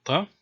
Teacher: I will usually use the pharyngalized pronunciation in this video. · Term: emphatic T